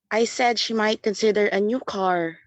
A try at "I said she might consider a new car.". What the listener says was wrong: Could you give it more emphasis, please? A new car. So this means when you are actually going over the speaking exam, you might want to actually put a stress, okay? So on certain words to be more emphatic about it.